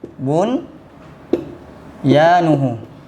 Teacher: Tapi tidak kita baca idgham bigunah, hanya kita baca dengan izhar saja. Itu namanya izhar mutlak, ya.